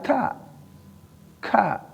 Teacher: sifat kap itu sifat yang harus ada desisnya